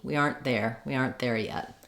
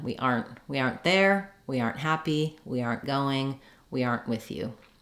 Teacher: I can still hear the first part of the R. I just hear my short N and my unreleased T.